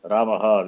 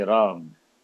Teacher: Ramaha, we say Ram. The last vowel we cut, right?